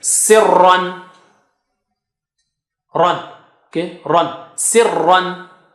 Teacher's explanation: ra is thick here